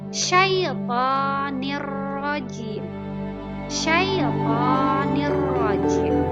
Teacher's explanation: bunyi nun mati atau tanwin dimasukkan kepada huruf setelahnya lam atau ra